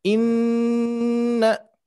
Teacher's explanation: Berikutnya ayat kedua, seperti biasa ayat kedua ada nun bertasdid, yang mana nun bertasdid ini harus kita dengungkan, harus kita tahan ya. Harus kita tahan.